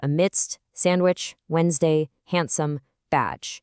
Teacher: You eat a sandwich on Wednesday, but you never ever pronounce that D. Somewhere along the historical line, that sudden plosive block of air just totally vanished from how we speak. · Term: silent T and D